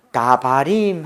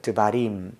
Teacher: 뒤를 강하게 하기 위해서 앞을 약하게 하는 것을 이제 모음 약화 현상이라고 얘기합니다